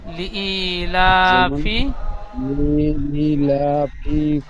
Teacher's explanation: যেমন লিইলাফি, লিইলাফি ই ই, কুরাইশ। লি ই, লামটা টান হবে না, হামজা ইয়াজের ই, ইয়া মাদ্দা টান হবে। লিইলাফি কুরাইশ।